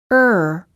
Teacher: it sounds like this R bright Russia from Red in contrast the American R is produced in the back of the mouth and the tip of the tongue never touches anywhere inside the mouth